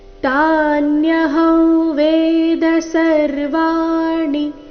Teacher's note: ತಾನ್ಯಹಂ ಅನುಸ್ವಾರದ ಉಚ್ಚಾರಣೆ ನಾಸಿಕಾ ವ ರೀತಿ, ಕಾರಣ ಮುಂದಿನ ಶಬ್ದ ವೇದ, ಅವರ್ಗೀಯ ವ್ಯಂಜನ ವದೊಂದಿಗೆ ಪ್ರಾರಂಭ ಆದ ಕಾರಣ.